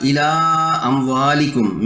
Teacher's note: چوتھی مثال الا اموالکم میں کھڑی زبر الف مدہ ہے، اور مفتوح حمزہ بشکل الف اگلے کلمے میں ہے، مد منفصل 4 حرکات کھینچ کر ادا کرنا ہوگی